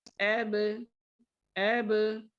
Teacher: با کا مخرج دونوں ہونٹوں کو ملانا